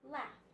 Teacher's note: this suffix is the suffix ed, but it sounds like t. It sounds like a t.